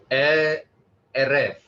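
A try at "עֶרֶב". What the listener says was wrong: The accent mark again, the first syllable has the emphasis.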